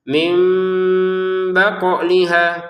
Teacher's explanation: nun sukunnya berganti menjadi mim sukun dengan adanya ba ini. Sehingga cara bacanya bukan min lagi tapi mim disertai samar · Qof-nya dipantulkan ya seperti dal.